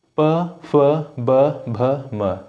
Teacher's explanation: आपके दोनों होथ टकरा रहे होंगे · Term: ओष्ठ